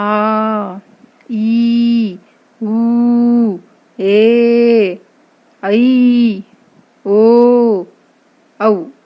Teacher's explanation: ಎರಡು ಮಾತ್ರ ಕಾಲದಲ್ಲಿ ಉಚ್ಚರಿಸುವಂಥ ಅಕ್ಷರಗಳು ದೀರ್ಘ ಸ್ವರಗಳು